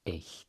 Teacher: And E and I together make an A sound. So it's just like the number 8 in English with a little pre-aspiration.